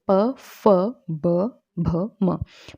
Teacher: जिन व्यंजनों के उच्चारण में दोनों ओष्ठों द्वारा श्वास का अवरोध होता है, मतलब श्वास को रोका जाता है, तो वो ओष्ठ्य व्यंजन कहलाते हैं।